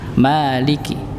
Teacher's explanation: mimnya tipis jangan ditebalkan